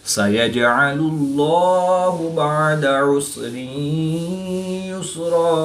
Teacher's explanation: دو زبر کی تنوین کو وقف کی حالت میں الف مدہ سے تبدیل کر کے پڑھیں گے